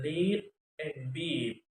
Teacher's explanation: it is made with the highest tongue elevation at the front of the mouth and unrounded lips. This vowel is a long vowel written phonetically E in lead and beat. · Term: High front unrounded